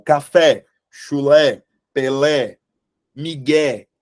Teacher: essas palavras Elas têm como sílaba tônica a última sílaba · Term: oxítonas